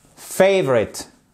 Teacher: Quand vous voyez ces signes-là, ces E renversés comme ceci, c'est ce qu'on appelle un schwa. Et le schwa, en fait, c'est un E atténué